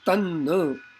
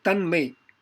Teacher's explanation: ta of tat changes to na, the Anunasika of Tavarga